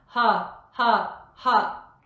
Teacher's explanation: ha happens just below the jaw think of it as happening at the top of the throat but don't tense the throat make sure you keep it open